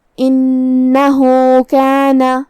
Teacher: حمزہ کی ادائیگی حلق کے نیچے والے حصے سے ہے. نون پہ تشدید ہے تو 2 حرف کے برابر ہمیں نون کو پڑھنا ہے. ہا پہ الٹا پیش ہے تو یہاں مد صلہ صغرا ہوا، ہم اپنی آواز 2 مد کے برابر لمبی کریں گے.